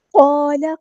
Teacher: قاف کو ہم نے یہاں پہ پورا ادا کرنا ہے، ہیوی لیٹر ہے ، الف مد آ گیا، ایک الف کے برابر ہم لمبا